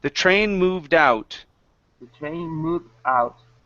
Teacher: the train moved out the train moved out uh moved out so it's the stress on out